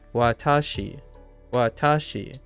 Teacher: So you go low, high, low.